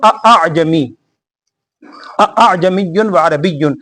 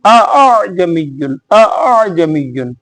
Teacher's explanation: ایک ہے اعجمی، اعجمی، ایک تو ہے نا دونوں سختی سے، ایک ہے اعجمی، اعجمی، پہلا حمزہ سختی سے، دوسرا نرمی سے، اس کو کہتے ہیں تسہیل۔